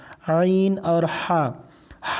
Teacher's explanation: आन और हा दोनों एक जगह से अदा होगा कहां से अदा होगा वस्ते हलक यानी हलक के दरमियान हिस्से से